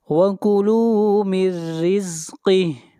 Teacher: نون ساکن کے بعد حروف یرملون میں سے را ہے، ادغام بلا غنہ ہوگا